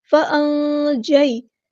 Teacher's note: فَأَنجَيْنَاكُمْ، نون ساکن کی آواز کو ہم نے چھپا دینا، اخفا ہو رہا ہے۔ فَأَنجَيْ، یائلین ہو رہی ہے، نرمی سے موڑیں گے، فَأَنجَيْ نہیں کرنا، فَأَنجَيْنَاكُمْ، نون پہ کھڑا زبر ہے، مد اصلی کریں گے، الف کے برابر لمبا کریں گے۔